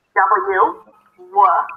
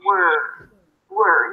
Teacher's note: Now practice this word as in we were, or the beginning of the word work. W, W, the tongue is down, the lips are rounded, and then you bring the tongue up immediately with no break in the middle